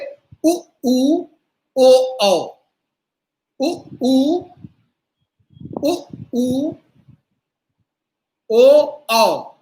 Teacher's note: उ ऊ ओ औ ये वृत्तकार, गोल रहते हैं होठ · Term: वृत्ताकार स्वर